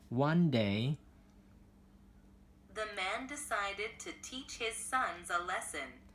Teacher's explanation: One day chúng ta sẽ lên giọng ở chỗ chữ one ha.